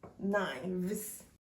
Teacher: Instead of pronouncing the consonant F, the speakers change the consonant F into the consonant V, which is pronounced when we put the upper teeth on the lower lip in the smooth way · whose consonant F is changed into the consonant V with the soft pronunciation while revealing the fact that the number of the object indicated by the general noun is plural.